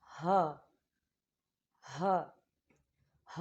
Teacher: ہا جو ہے یہ موٹا پڑھا جانے والا حروف ہے، اسے باریک نہیں پڑھتے، اگر آپ باریک پڑھیں گے تو قرآن کا ترجمہ جو ہے وہ چینج ہو جائے گا۔